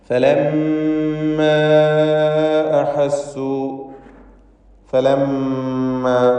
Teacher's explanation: മീം മുശദ്ദദയെ മണിക്കണം, ഉന്നത്ത് നൽകി ഉച്ചരിക്കുക. അതിൻ്റെ ദീർഘാക്ഷരമായ അലിഫിന് മദ് മുൻഫസിൽ ജായിസ് നൽകി 4-5 ഹറക്കത്തിൻ്റെ അളവിൽ ദീർഘം നൽകുക.